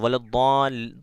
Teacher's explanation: تو ولضال، ضاد کو کتنا کھینچنا ہے؟ 3 الف کھینچنے کے بعد ضاد کو لام میں ملا دینا ہے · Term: مد لازم